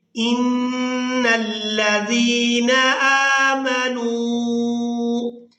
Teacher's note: زال کو نرمی کے ساتھ ادا کرتے ہوئے یائے مدہ کی وجہ سے کھینچ کر ادا کریں گے